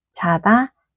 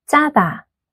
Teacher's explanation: To make this sound, press your tongue a bit tighter and add more tension. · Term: 쌍지읒